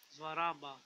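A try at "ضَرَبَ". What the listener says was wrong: دورا با This is not زوا This is دواد Duat fata da. Duat fata da.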